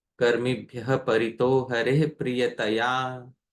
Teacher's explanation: there is a yati, or there is a pause on every 12th syllable